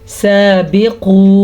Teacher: ये मोटा क़ाफ है, इसको बारीक नहीं पढ़ सकते · ये मद 3 अलिफ के बराबर है। इसको तकरीबन 2 सेकंड तक लंबा करना ज़रूरी है, लेकिन बा को लंबा नहीं करेंगे क्योंकि बा के नीचे ज़ेर है। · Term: अलिफ मद्दा